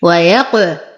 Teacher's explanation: نقلقل القاف فهي من حروف قطب جد مع تفخيمها